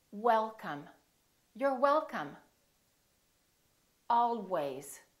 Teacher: if you don't round your lips it's probably going to sound like a v sound